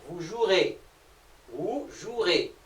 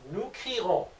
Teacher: Le E ne se prononce pas.